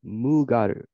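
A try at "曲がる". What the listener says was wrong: Not mu. Hi, magaru.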